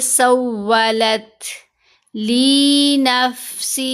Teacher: ہمس کا اظہار ہوا، یعنی آواز کو کمزور کر دیا